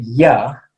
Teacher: when i say yeah the kind of the back of my tongue is touching the top of my mouth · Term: yeah sound